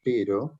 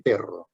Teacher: la E de pero es más larga y cerrada que la E de perro